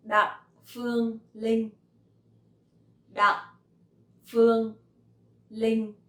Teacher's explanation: So my last name has dấu nặng and my name has no tone.